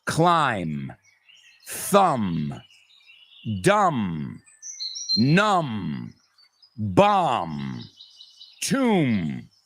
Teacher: What do all these words have in common? The B's are completely silent at the end. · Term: silent B